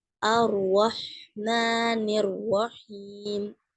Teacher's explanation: இங்க ரெண்டு ராக்குமே ஃபத்ஹா இருக்கு அப்போ நம்ம என்ன பண்ணனும் ஹெவி பண்ணி ஓதணும் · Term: ஹெவி ரா